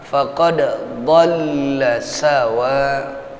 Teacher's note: sawa as-sabil, 4 sampai 5 harokat ya. Dia mengandung hukum mad wajib muttasil. Ya, 4 sampai 5 harokat paling tidak.